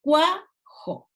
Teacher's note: la A es la que está recibiendo la mayor carga de voz